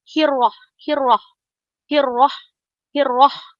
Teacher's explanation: jangan terlalu getarkan huruf ro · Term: kurangkan getaran